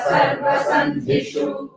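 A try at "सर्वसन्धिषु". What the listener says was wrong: So again, shu is short. Sandhishu. That's it. It's not Sandhishu. Sandhishu.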